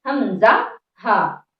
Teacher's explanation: حمزہ، جو کہ حلق کے نیچے والے حصے سے ہے، اسی کے ساتھ ہا، جو کہ بالکل آسانی کے ساتھ ہوا کے ساتھ بہتے ہوئے نکل جاتا ہے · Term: حروف حلقی